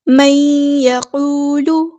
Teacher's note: ادغام ناقص ہو رہا ہے، ہم نے یہاں پہ 2 حرکت یعنی 2 کاؤنٹ رکنا ہے